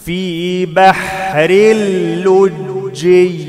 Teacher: تنوين بعد لام إدغام بدون غنة